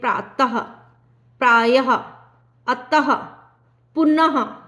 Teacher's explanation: विसर्ग जो है वह अलग से नहीं है ह की ध्वनि आती है